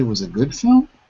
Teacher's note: this is a statement but it's going to be said like a rising question